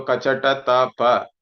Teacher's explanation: you do not give extra air or breath. It's normal aspiration or less aspiration. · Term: alpa prana